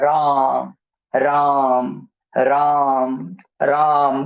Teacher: राम, र, आ, म, ये सब अल्प प्राण है।